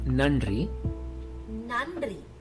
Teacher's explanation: The first n is normal. You make the sound by touching the teeth.